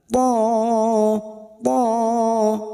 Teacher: Huruf to adalah huruf isti'la, maka bunyinya tebal.